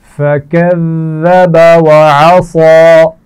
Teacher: وَعَصَى صاد کو موٹا پڑھا جائے گا